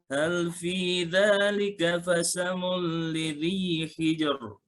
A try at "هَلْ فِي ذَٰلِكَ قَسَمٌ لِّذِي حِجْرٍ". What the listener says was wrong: Jangan tebal, tipis. Hal fi dzalika qasamul lidzi hijr. Tipis hijr.